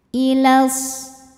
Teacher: karena alif lam menghadapi huruf e Syamsiyah yaitu huruf Shad maka alif lam ini tidak kita baca atau disebut dengan Idgham Syamsi ya jadi langsung masuk ke Shad